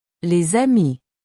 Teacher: The S becomes a Z sound.